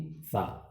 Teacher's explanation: صفت ہمس کی تعریف ہوگی کہ حروف محموسہ کو ادا کرتے وقت آواز مخرج میں ایسے ضعف کے ساتھ ٹھہرے کہ سانس جاری رہے اور آواز میں ایک قسم کی پستی ہو، جیسے یلحظ کی سا۔